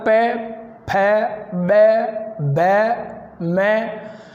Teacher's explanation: होठों के मिलने से इसका उच्चारण हो रहा है, ये ध्वनि प्रकट हो रही है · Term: ओष्ठ्य